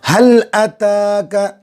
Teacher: हल अताका, लाम पर जैसे में लाम को हाथ से मिलाएंगे, ता पर खड़ा ज़बर खींचेंगे